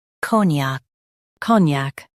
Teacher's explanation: Stress co and keep gnac light.